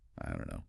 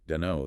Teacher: you rarely hear that final T sound of don't pronounced clearly before the K. No, it often gets dropped entirely. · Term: elision